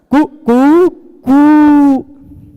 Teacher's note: पहले बार ह्रस्व रहता है, उसका फिर दीर्घ रहता है, फिर प्लुत रहता है,